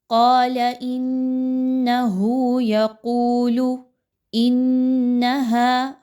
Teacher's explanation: حمزہ اور نون مشدد کا غنہ کیجئے، آواز کو ناک میں لے کر جائیے۔